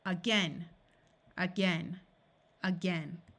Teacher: This A will schwa and sound like a short U